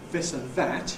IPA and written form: ˈðɪs ən ˈðæt (this and that)